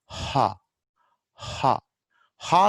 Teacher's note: there is no obstruction in the mouth, but obstruction is at the glottis. Okay, so ha, at glottis level air is stopped and then released.